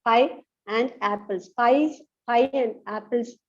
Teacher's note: we can contract the form and into n